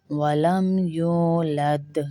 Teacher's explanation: یو کو کھینچیں گے واو کو، کیونکہ یہ واو مدہ ہے